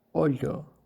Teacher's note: Esse segundo som pode ser emitido também com um som muito parecido com ya. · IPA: /ʎ/